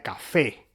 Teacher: tenemos sílabas tónicas, que son las que reciben la carga del acento, donde está el énfasis. Por ejemplo, la segunda sílaba de café. Entonces la segunda sílaba es la sílaba tónica y la primera sílaba K es una sílaba átona.